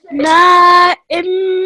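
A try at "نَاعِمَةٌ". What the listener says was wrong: Okay, this is an ayn with a kasra, I. This is a meme with the fatha, ma. There's no joining between them, they're separate sounds. I, ma. Na'imah.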